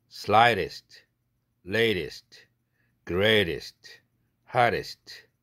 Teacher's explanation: weakly aspirated t 사운드에서 flap 사운드로 바뀌는 것입니다.